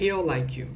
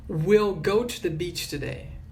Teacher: E por ser anexa, ela pega pouca força. É como se he will ou he'll fosse uma palavra só. E o he é forte.